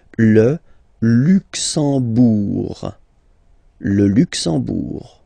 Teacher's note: You don't pronounce the M at all, it's this nasal en, okay? Le Luxembourg.